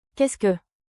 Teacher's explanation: Finish with a soft rising tone.